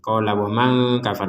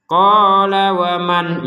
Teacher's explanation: Qala wa man kafar, barusan ada nun sukun bertemu kaf, kita bacanya dengan samar